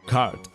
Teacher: muchos hablantes de inglés estándar no pronuncian las R que vienen justo antes de una consonante